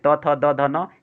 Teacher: त थ द ध न, ये दंत्य वर्ण के अंतर्गत आते हैं